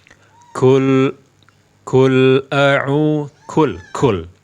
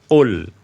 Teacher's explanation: ketika menyebutkan huruf qaf, jangan diberi sifat hamas